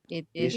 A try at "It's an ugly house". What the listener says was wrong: Okay, again, so it is correct, but we must pronounce it in the way it's written, and it's written it's. So it's an ugly house.